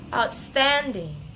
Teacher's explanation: secondary stress in the first syllable and then primary stress is in the second syllable